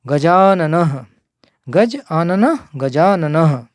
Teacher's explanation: गज प्लस आननः, गज, जा में से आ है अंतिम वर्ण और आनना का प्रथम आ, दीर्घ आ है, तो आ और आ मिलकर एक दीर्घ आ रह जाएगा